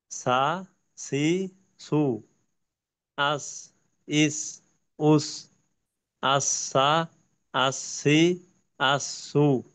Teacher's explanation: সিনের ক্ষেত্রে দুই দাঁতের আগার থেকে একটু নিচে। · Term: সিনের উচ্চারণ